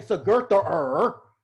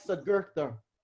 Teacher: It's like a light R, like an aspirated R.